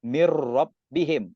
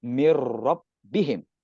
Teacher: Nun mati di sini. Berjumpa huruf ra, hukumnya adalah idgham bila gunnah. Yang masuk selajur.